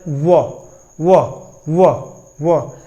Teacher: ठीक, व को देख लेंगे, व की बात करें तो दंठोस्थ, इसको हम बोलते हैं दंतोष्ठ, यानी दांत और ओष्ठ दोनों काम करता है। व, यानी दांत और ओठ दोनों काम कर रहा है, इसलिए हम दंठोष्ठ बोल देंगे।